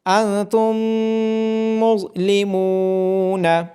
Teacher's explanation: جب میم ساکن کے بعد ایک اور میم آ جائے تو ایسی صورت میں ادغام شفوی ہوتا ہے۔ میم کی آواز دوسرے میم میں مرج ہو جاتی ہے، آواز کو ضم کر دیا جاتا ہے